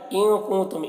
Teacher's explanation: ان کے نون میں اخفا ہو رہا ہے، کنتم کے نون میں اخفا ہو رہا ہے، میم میں اظہار شفوی ہو رہا ہے.